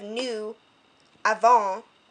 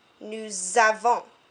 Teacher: if you have an S and then your next word starts with a vowel, the consonant and the vowel kind of swing together in French. So instead of nous avons, it becomes nous avons. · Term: liaison